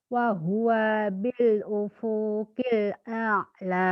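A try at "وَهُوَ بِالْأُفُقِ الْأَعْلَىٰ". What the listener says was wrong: Ufunya pendek.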